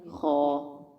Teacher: خا 2 حرفی حروف میں سے ہے، کیونکہ 2 حروف پر مشتمل ہے، خا اور الف، اس لیے ہم اس کو 2 حرکات کے برابر لمبا کر کے پڑھیں گے